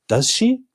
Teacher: And at the end of the sentence, we have a question mark. And when we pronounce it, we lift our intonation up.